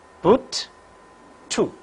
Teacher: During the articulation of this vowel oo, back of the tongue is raised to a position just above half close. The lips are in rounded position. It can occur medially and finally only.